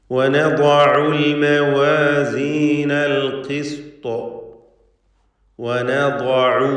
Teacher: ദ്വാദിനെ തഫ്ഖീം ചെയ്യണം, തടിപ്പിച്ച് സ്വരഭാരത്തോടെ ഉച്ചരിക്കുക